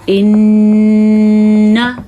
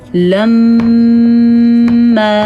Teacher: نون مشدد کا غنہ اور میم مشدد کا غنہ ہر صورت میں ادا کرتے ہیں